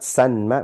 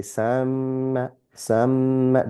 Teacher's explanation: So the n sound falls away. The n of the nun sakin and the n of the an falls away. That's what the idgham rule is about.